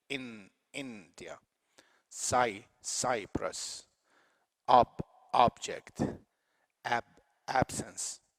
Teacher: the force is at the beginning of the word on the first syllable